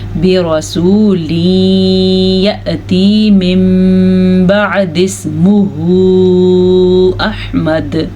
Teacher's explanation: یہ قاعدہ آپ نے پڑھا ہوا ہے کہ جب بھی قرآن مجید میں نون ساکن کے بعد یا تنوین کے بعد با آ جائے تو وہاں پہ اقلاب کا قاعدہ ہوتا ہے, ہونٹ بند ہو جاتے ہیں اور غننے کی کیفیت پیدا ہو جاتی ہے. برسول یأتی من بعد اسمہ احمد.